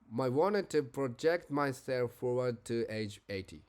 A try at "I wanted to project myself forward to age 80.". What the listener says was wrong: Yeah, where is a linking sound there? Linking sound. It's I wanted to.